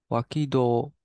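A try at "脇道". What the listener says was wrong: So in this context, a lot of times this does get pronounced as do when it's with somebody. It's actually pronounced as michi here, being very confusing for us. Wakimichi.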